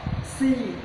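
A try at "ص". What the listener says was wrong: Jangan si. Zo. Zo. Tempelin ke gigi.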